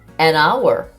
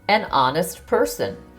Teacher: the H is silent, so the word starts with a vowel sound